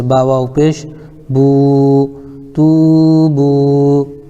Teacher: واو ساکن سے پہلے با کے اوپر پیش ہے اس لیے واو مدہ ہوگا، ان کو تھوڑا کھینچ کر پڑھیں، جیسے با واو پیش بو، تو بو۔